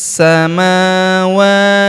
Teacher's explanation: Huruf wa kita panjangkan dua harakat karena terdapat alif kecil di atasnya.